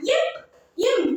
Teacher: இப் இம் ஆகிய இரு மெய்களும் மேலுதடும் கீழு உதடும் பொருந்துவதால் பிறக்கின்றன. · இரு மெய்களும் மேலுதடும் கீழுதடும் பொருந்துவதால் பிறக்கின்றன. இப், இம் நம்ம மேலுதடும் கீழுதடும் பொருந்துவதால் தான் இப்பு இம்மும் பிறக்கின்றன.